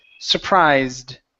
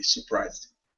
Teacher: Instead of pronouncing this e, saying surprised, we only pronounce a d.